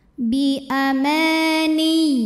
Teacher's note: karena ada Alif sebelumnya berbaris fathah maka dibaca panjang dua harakat